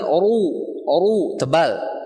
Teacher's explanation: Baca oru tebalkan antum. Jangan sampai tipis. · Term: Ra tafkhim